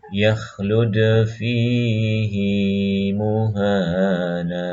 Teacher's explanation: wajib untuk membaca mad ha kinayah berikut kadarnya 2 harokat